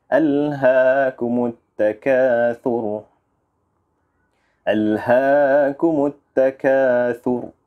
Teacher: walaupun huruf ra-nya berbaris hadapan, akan tetapi apabila diwaqafkan, huruf ra-nya mati. Okey, Jadi oleh itu kita harus matikannya dengan bacaan yang tebal. Alhaakumut takathur.